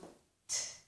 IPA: t